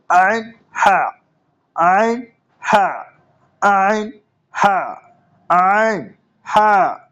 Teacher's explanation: গলার মাঝখান থেকে উচ্চারিত হয় আইন হা